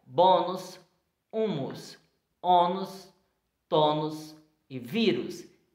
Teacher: Exemplo que você percebe claramente que a sílaba tônica dessas palavras é a penúltima sílaba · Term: paroxítona